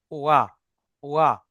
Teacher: দুই ঠোঁট গোল করে ওয়াও উচ্চারিত হয়, অর্থাৎ ওয়াও জাবার ওয়া।